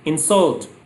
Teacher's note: if I use that word as a verb, then stress will be on the second syllable and second syllable will be long.